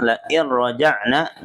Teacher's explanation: nun sukun ketemu ro, idgham bila guna, cukup ditarik saja ro-nya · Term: idgam bila guna